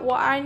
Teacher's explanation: Semivokal bilabial W bersuara dan dilafalkan dengan mendekatkan kedua bibir tanpa menghalangi udara yang menembus dari paru-paru